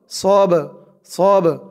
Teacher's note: এই বাটা কলকলার হরফ ধাক্কা দিয়ে পড়তে হবে।